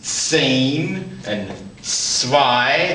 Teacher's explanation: Again, the Z, when it's heading a word, is almost like a TS sound.